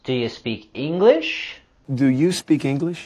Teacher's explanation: the reduced form of do you do you do you and we're going to have the rising intonation with this question as it's a yes no question